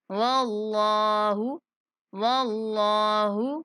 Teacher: اللہ کے لام کو موٹا کر کے پڑھیں گے